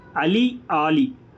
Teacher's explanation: வகர லகரத்துக்கு ரெண்டுமே வகர லகரம் தான். இங்கே குறில் நெடில் தான் வேறுபாடு.